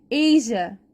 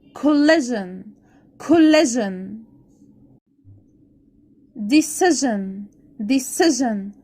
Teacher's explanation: وهو صوت الج ج وأحبال الصوتية فيه بتتحرك، أوكي، وهيجي في مقطع إيه أو إزاي اللي أنا أنطقه الج لما ألاقي اس اي. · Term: الجيم المعطشة